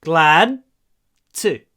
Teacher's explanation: А вот слышите, когда я произношу этот glad to, я говорю glad to. Я не отпускаю д.